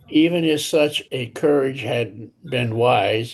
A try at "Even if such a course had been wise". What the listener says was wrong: Of course. Of course. Even if such a even if such a course had been wise, not courage.